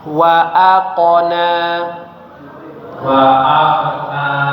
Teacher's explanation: bagian qalqalahnya jangan terlalu apa ya? Terlalu kuat karena ini di tengah-tengah kata. Jadi aqona seperti mirip seperti dia fathah ya hampir setengah dari fathahnya.